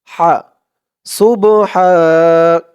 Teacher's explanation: খেয়াল করবেন সুব হাফ এখানে হা বলা যাবে না কারণ এখানে এই বড় হা উচ্চারণটা করার সময় গলার ভিতর থেকে আওয়াজটা চিকুন হয়ে আসবে